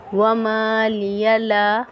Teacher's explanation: وَمَا لِيَ لَا پہ مد ہے، 4 الف کی مقدار کھینچی پڑھیں گے